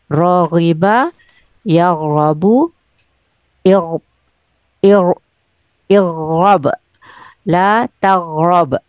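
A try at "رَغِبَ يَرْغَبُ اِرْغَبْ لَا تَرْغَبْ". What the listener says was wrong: La targob. Ro dulu.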